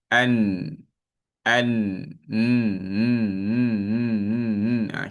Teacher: Makhraj huruf nun dia berada di hujung lidah bertemu langit atas.